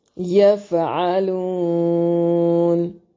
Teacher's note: یفعلون لو واو مدہ ہے، اس لیے وقف کی صورت میں مد کر کے پڑھ سکتے ہیں